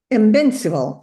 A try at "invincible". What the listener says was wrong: Yeah, that's pretty much it. Yes, invincible. The V is a little bit stronger. Invincible. Invincible.